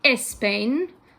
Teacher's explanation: a lot of Spanish speakers who are learning English will tend to put an e in front of words that start with consonant clusters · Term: added e